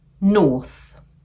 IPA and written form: nɔːθ (north)